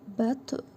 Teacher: Bu qalın ta hərfidir. Üzərində cəzm var. Vurğulu tələffüz edirik. Qalqala hərfidir.